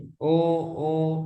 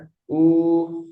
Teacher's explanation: U jadi enggak ada getaran sama sekali di hidung.